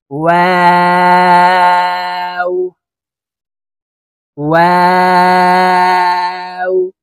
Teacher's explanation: ওয়াও হরফের উচ্চারণ দুই ঠোঁট গোল করে দুই ঠোঁটের মাঝে ফাঁকা রেখে উচ্চারণ করব।